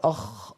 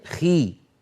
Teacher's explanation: والساكن اكثر تفخيما من المكسور